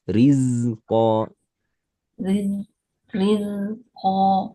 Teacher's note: Keluarkan sedikit lagi desis pada zai.